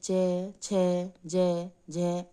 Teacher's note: च वर्ग तालु से बोला जाता है